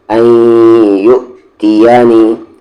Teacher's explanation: جب بھی حمزہ پہ جزم آتا ہے تو جھٹکے کے ساتھ پڑھتے ہیں اور یہاں پہ غنہ ہو رہا ہے کیونکہ نون ساکن کے بعد یا ہے